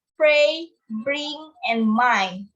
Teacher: bilabial, formed with two lips